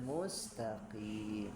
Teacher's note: Ihdinas siratal mustaqim ya, qafnya juga qaf tebal yang mustaqim. Karena kalau tidak hati-hati, nah bisa bergeser ke huruf kaf.